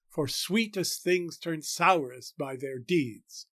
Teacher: the first line is largely a regular iambic line with five stresses in normal iambic position